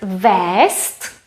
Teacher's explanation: We spell it with Z. We pronounce it with S.